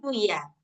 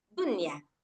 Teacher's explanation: Nah, jadi suara nunnya dijelaskan dan tidak ada dengung sama sekali. · Ketika nun di sini dibaca sejelas-jelasnya seperti mana hukum izhar yang kita tahu sebelumnya. Nah, jadi mutlak dibaca izhar, nggak boleh dibaca idgham. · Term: izhar mutlak